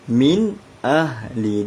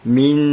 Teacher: Bila huruf nun mati ada tanda sukun, dia ialah izhar halqi. Izhar halqi bacaannya jelas, tak boleh dengung.